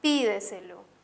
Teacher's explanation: Esta palabra tiene la característica de tener el acento en la anterior a la antepenúltima sílaba